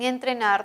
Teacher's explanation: Ambos se articulan con el ápice de la lengua que toca la zona posterior a los dientes superiores o a los incisivos superiores. En ambos casos la lengua toca por completo o toca una parte, produce una fricción, pero esa zona en ambos casos es la zona alveolar.